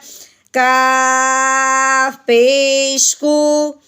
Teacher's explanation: یہ کاف ہے، چھوٹا کاف ہے، ہم نے حلق سے نہیں نکالنا، سادہ سی آواز سے نکالنی ہے. اس کے اوپر پیش ہے کاف پیش کو.